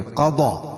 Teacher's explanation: قاف کو پور پڑھیں گے, ضاد بھی پور پڑھی جائے گی. کیوں؟ دونوں حروف مستعلیہ میں سے ہے.